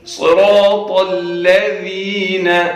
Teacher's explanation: یہ جو زبان کا آگے والا حصہ ہے، یہ اس کو اوپر کے دو جو دانت ہیں جنہیں ثنایا علیہ کہا جاتا ہے، ان کے کناروں کے ساتھ لگانا ہے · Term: ذال